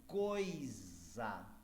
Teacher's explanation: o o é uma vogal e o i é uma semivogal